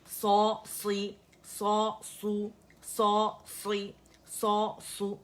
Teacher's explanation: सौ था, उसे कसरा दे दी तो आवाज़ नीचे चली गई. सौ था, उसको दम्मा दे दिया, उसे गोल कर दिया